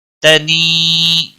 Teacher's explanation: یا مدہ ہے، ایک الف کے برابر کھینچ کر پڑھیں گے